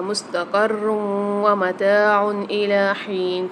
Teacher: مستقر دو پیش کی تنوین کے بعد واو مشدد آ رہی ہے تو یہاں پر ادغام مال غنہ والا قاعدہ ہوگا تو یہاں پر ہم سختی اور جماؤ کے ساتھ بھی پڑھیں گے اور یہاں پر ہم غنے کے ساتھ ادغام کر کے پڑھیں گے، یعنی یہاں پر غنہ بھی ہوگا · پھر متاع میں عین کے اوپر دو پیش آ رہے، دو پیش کی تنوین کے بعد حمزہ عین ہا و خا میں سے حمزہ آ رہا ہے تو یہاں پر ہم غنہ نہیں کریں گے، اظہار کر کے پڑھیں گے. لام کے اوپر کھڑا زبر آ رہا ہے تو یہاں پر بھی ایک الف مدار کھینچ کے پڑھیں گے.